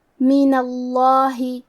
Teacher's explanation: اللہ کے لام کو موٹی آواز میں پڑھیں گے